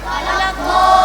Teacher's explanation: Mad layyin, waw atau ya sukun didahului oleh huruf fathah yang dibaca sebagai waqf, panjangnya tiga alif atau enam harakat